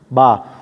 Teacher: दोनों होठों के तर हिस्से मिलाने से अदा होते हैं